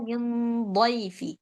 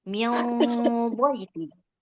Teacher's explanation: Jadi gunnahnya ikut tebal mengikut huruf setelahnya tebal.